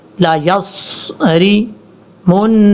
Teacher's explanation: نون کے اوپر شد ہونے کی وجہ سے غنہ کیا جائے گا